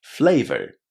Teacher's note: if you speak international English, you should definitely say flavor with a R at the end.